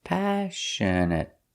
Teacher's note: The stress is on the first syllable, passionate. And the next two syllables are pronounced the same, passionate.